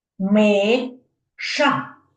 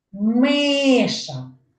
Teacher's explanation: перший склад в цьому слові є наголошеним